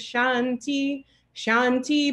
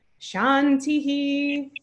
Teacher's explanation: if there's a word following it it gets a very short sound so it's just Shanti Shanti but then the last one gets an echo Shanti because there's nothing following it um Shanti of course means